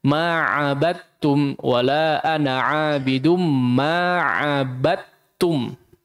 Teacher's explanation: Tapi dal sama ta bertemu, dikeluarkan dari makhraj yang sama, kemudian diidghamkan. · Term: idgham mutajanisain shaghir